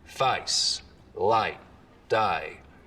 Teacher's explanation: Up here you get some really dramatic face lowering, for example. So the diphthong in face starts real low, down around a, face, light, day.